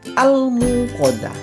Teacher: al-muqaddam itu awalnya dibaca jelas atau izhar qamariyah